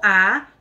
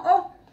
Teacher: la vocal kamatz, el sefaradí la pronuncia como A y el ashkenazí como O